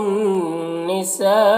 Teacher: سا میں جو مد ہے یہ مد متصل ہے، اسے 3-4 الف کے برابر کھینچ کر پڑھتے ہیں